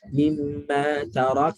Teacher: Nun. Matikan pada makhraj dia. Hujung lidah ke langit-langit atas.